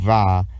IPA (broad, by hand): v